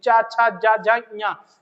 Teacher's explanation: चा में जीभ जो है दांत से और तालु के बिल्कुल, जैसे दांत जहां दंत खत्म हो रहा है, जहां तालु स्टार्ट हो रहा है वहां पे लगेगी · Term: तालव्य